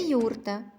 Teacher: На початку слова літера Ю завжди позначає два звука й у.